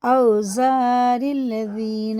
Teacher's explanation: اور زال باریک ہوتا ہے، اوپر کے دانتوں کے کنارے سے اپنی زبان کی نوک لگا کے